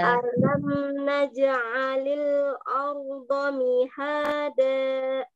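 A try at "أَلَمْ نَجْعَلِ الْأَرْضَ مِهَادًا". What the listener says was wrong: Nah, hamzahnya tipiskan. Baru ho-nya tebal. Arda mihada.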